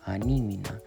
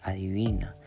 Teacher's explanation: nasalización, que es cuando el niño reemplaza la D por la N. O cuando dice, por ejemplo, anímina por adivina.